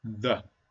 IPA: ðə